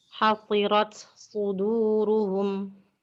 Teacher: Tak sukun dibaca izhar, yakni tak sukun tidak diidghamkan ke dalam shad sesudahnya. Tentunya sifat hamas tak sukun tetap masih ada.